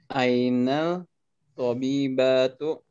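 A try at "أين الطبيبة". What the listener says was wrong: Ini alamnya jangan dibaca karena alif lam syamsiah.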